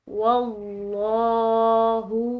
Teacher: لفظ اللہ کی لام پورا ادا کی گئی ہے کیونکہ اس کا پیچھے والا حرف جو ہے مفتوح ہے، زبر کے ساتھ ہے، تو لفظ اللہ کی لام پورا ادا کریں گے.